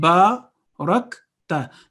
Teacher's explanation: ba has an alif of elongation in front, so there will be 2 seconds. Barakta. There is no jerking sound on kaf.